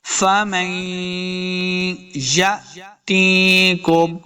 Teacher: حمزہ ساکن جب بھی ہوگا تو ہم نے اس کو جھٹکے کے ساتھ پڑھنا ہے، لمبا نہیں کریں گے